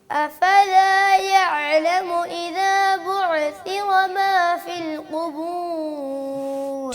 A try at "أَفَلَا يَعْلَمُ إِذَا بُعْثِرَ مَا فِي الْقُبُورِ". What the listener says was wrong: بعثر، یہ والی عین بھی رہ گئی ہے، پہلی ٹھیک ہو گئی ہے. اس کو بھی درست کریں. بعثر جیسے قاری صاحب نے. اب پوری آیت پڑھنی ہے لیکن بعثر کی عین کو دھیان سے پڑھنا ہے، نہیں ہلانا اس کو.